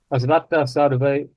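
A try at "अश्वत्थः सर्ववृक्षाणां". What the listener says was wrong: not Sarve? Sarva.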